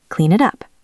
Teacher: If they make a mess, clean it up. The N connects to the I.